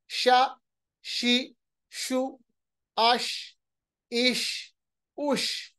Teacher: शीन के पास एक चीज है कि शीन को पढ़ते वक्त आवाज फैलती है। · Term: तफशी